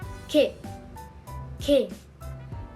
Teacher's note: It is pronounced with more tension and a tighter glottal stop, similar to a hard k sound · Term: tense version of kiyok